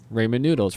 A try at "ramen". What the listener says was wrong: No D. No D. Ramen.